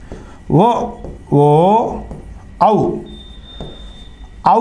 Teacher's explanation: కంఠ తాలవ్యాలు అంటారు కంఠం దవడతో కలిపి పలికేవి ఓ ఓ ఔ ఔ అనేది ఆ ఉ ఊ అనే రెండు అచ్చులు కలియక వల్ల ఏర్పడింది వాటిని కంటియోస్టిట్యాలు అంటాం. కంఠము పెదవులతో కలిపి పలికేవి · ఔ అనేది ఆ ఉ అనే 2 అచ్చుల కలయిక వల్ల ఏర్పడింది. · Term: కంఠ్యోష్ట్యాలు